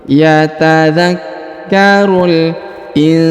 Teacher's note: huruf nun sukun bertemu dengan sa, maka didengungkan dan disamarkan